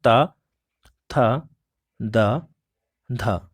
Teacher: जिसको ऊपर के दांतों में जीभ लगाने से जब उनका उच्चारण होता है तो उनको दंत व्यंजन होता है